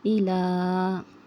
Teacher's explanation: खड़ा ज़बर is equal to अलीफ मद्दा। अलीफ मद्दा को कितना खींचेंगे उतना ही खड़ा ज़बर को भी खींचेंगे, यानी 2 काउंट्स, यानी 1 अलीफ की मिक़दार, 1 अलीफ की मिक़दार खींचकर इसको पढ़ेंगे।